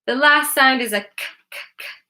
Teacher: The last sound is a kuh, kuh, kuh. Which is an unvoiced consonant.